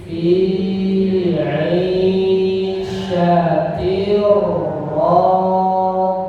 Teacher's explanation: Yang panjang ain ya, syanya pendek ya. Fi ain syatir langsung ya.